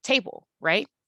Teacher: That bull sound, bull, takes less than a second to say, table, right? So the stress sound in table is that first A sound. The unstressed syllable is the N sound, the bull sound.